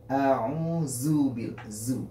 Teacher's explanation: Kan terasa dia bunyinya hampir seperti bunyi sin karena makhraj zai dengan sin itu dekat sekali.